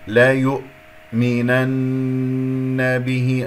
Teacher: انطي حق النون المشددة، الغنة أكمل ما تكون ، به قابل مد الصلة صغرى بمقدار حركتين، كسرة الباء والهاء،